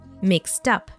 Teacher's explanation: The T sound at the end of mixed is linked to the next vowel, mixed up. Listen again and repeat.